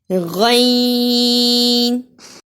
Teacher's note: यह अदना हलक से निकलता है यानी हलक का वह हिस्सा जो मुंह के नजदीक है